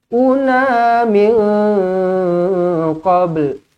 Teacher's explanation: Nun kosong bertemu dengan qaf, ikhfa hakiki, dengungkan dua harakat